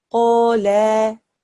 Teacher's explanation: There's only one small change, and that is that after the lam, there is an alif madda. So, when we read this word, it will be read as qala. 2 seconds from the alif madda.